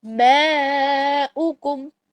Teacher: ماؤکم، اور یہ ماؤکم نہیں ہے، یہ اوکم ہے. ماؤکم، حمزہ پیش او جو ہے وہ صرف ایک حرکت کے برابر پڑھنی ہے. ایک حرکت کا مطلب ہوتا ہے صرف حمزہ پیش او، حمزہ پیش واو او لمبی نہیں ہے.